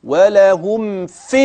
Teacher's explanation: تخلص الميم من الفاء بدون غنه واضحه